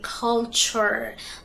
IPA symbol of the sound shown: ɘr